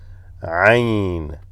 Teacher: This originates from the center of the throat, and you have to squeeze your throat at the bottom to make that Ain.